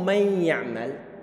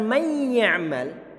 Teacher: suara nunnya enggak terdengar sama sekali. Saat ditanya kok enggak terdengar, padahal saat dituliskan nunnya ada.